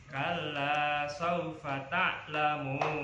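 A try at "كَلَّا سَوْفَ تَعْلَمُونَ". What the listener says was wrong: Kurang ya? Lagi berapa ketukan tadi? Baru 4. Kurang panjang. Kalla saufa ta'lamun. Sampai 6 ketukan.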